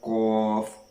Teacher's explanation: اس میں پہلے ذکر کیا گیا ہے قاف اور کاف کا، یہ حروف لہویہ ہیں، اور جو قاف ہے، موٹا قاف ہے، یہ زبان کی جڑ اور تالو کے نرم حصہ سے ادا ہوتا ہے۔